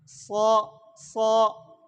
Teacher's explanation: اب قا الف موٹا ہوا کہ نہیں ہوا؟ ہاں صا صا اس میں صفت اطباق بھی ادا ہوا اور صفت استعلاء بھی ادا ہوا